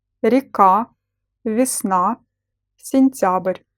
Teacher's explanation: The letter E in the unstressed syllable is pronounced as И.